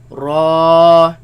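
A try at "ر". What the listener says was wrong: Raise the back of the tongue. Make it heavy.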